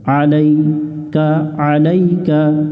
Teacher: আইন অক্ষর আছে এটা হলকের মধ্য থেকে অর্থাৎ মাঝখান থেকে একটু চেপে পড়তে হয় আলাইকা পড়া যাবে না আলাইকা একটু গলা চাপতে হবে আলাইকা আলাইকা